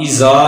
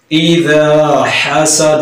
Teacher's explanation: ذا نرمی کے ساتھ، زا کی آواز نہ پیدا ہو